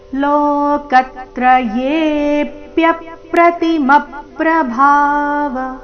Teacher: ಲೋಕತ್ರಯೇಪ್ಯ, ಲೋಕತ್ರಯೇಪ್ಯ ಮುಂದೆ ಪ್ಯ ಮೇಲೆ ಪದ್ದು ಆಘಾತ, ಪ್ಯ ಪ್ರತಿಮಪ್ರಭಾವ, ಪ್ರತಿಮಪ್ರ ಮ ಮೇಲೆ ಆಘಾತ, ಪ್ರತಿಮಪ್ರಭಾವ. ಭಾ ಮಹಾಪ್ರಾಣ ದೀರ್ಘ, ಕೊನೆಗೆ ವ ರಸ್ವ.